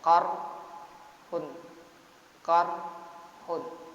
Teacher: Fathah berjumpa dengan ra sukun, maka ra-nya dibaca tebal. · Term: tafkhim